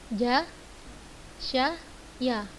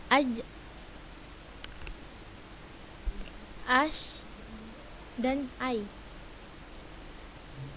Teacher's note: Lidah bagian tengah, ini kita lihat gambarnya nih, lidah bagian tengah menempel kepada langit-langit bagian atas